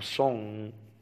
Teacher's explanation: شفت الخنفان, يعني كلمة إنجلش فيها صوت من الأصوات اللي الناس مهملة ومش عارفة, هو بيجي تلقائي في كلمة إنجلش. إنجلش فيها نيزل إن, الإن فيها خنفان دي